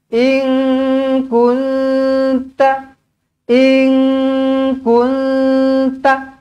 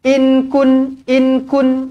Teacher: kunta in kunta nampak Jangan inkun inkun tak nak macam tu Ini bukan izharu ini ikhfa ini Ikfa kena dengung